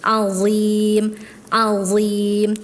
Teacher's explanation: Hati-hati ketika mengucapkan huruf dha harokat sukun ya. Huruf dha itu punya sifat isti'la, artinya tebal, dia pangkalnya naik. Sukun, dan dia punya sifat itbaq, sudah mah isti'la itbaq ya, udah mah tebal, dia nempel melekat.